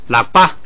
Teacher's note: 本来要降下来的，但是前不降，所以把降的那一半去掉，只剩下升